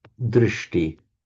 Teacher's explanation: where within a word you have a sh followed by a t, they automatically become retroflex. So drishti becomes drishti.